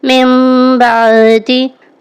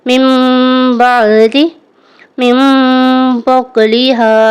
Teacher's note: یہاں پر نیکسٹ جو ہے اقلاب کا قاعدہ آ رہا ہے نون ساکن کے بعد با ہے تو میم کے ساتھ بدل کر اخفا کریں گے یعنی غنہ کر کے پڑھیں گے